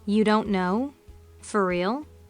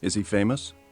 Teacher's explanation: there's a rising intonation in you don't know for real and also in is he famous